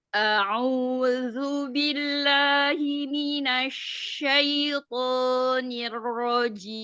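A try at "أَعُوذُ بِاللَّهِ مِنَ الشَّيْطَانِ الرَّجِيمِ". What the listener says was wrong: Bisa nggak ditebalkan lagi huruf ro-nya? A'udzu billahi minasyaitonir rajim. Niro. Niro.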